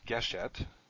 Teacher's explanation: you end up with two vowels that are the same, generally segel, and the stress moves to the beginning